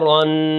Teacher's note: اس کے اندر غنہ کریں گے، ناک کے اندر آواز لے جائیں گے جو تنوین کی آواز ہوتی ہے